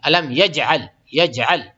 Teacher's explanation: جیم پہ جو ہے قلقلہ ہوگا کیونکہ جیم پہ جزم آ گیا